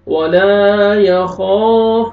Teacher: ولا، الف مدہ، الف سے پہلے زبر، لام کو اپنے کھینچنا ہے ایک الف کے برابر، یا خوف، خو کو موٹا کر کے اور کھینچنا ہے ایک الف کے برابر، الف سے پہلے زبر ہے.